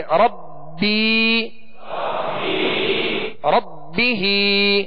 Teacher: تو یا مدہ ہے، ایک الف کی مقدار میں کھینچ کر پڑھیں گے